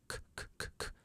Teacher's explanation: Do you hear a vibration when you say k? K, k, k, k? No, it's only air. So it's an unvoiced sound.